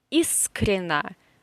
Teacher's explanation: So, the stress is in the first syllable, искренно. So, ye in the middle and o in the last syllable, they are in unstressed positions.